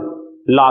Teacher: किनारे का मतलब इनके उच्चारण में हवा जीभ के किनारों से निकल जाती है। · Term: पार्श्विक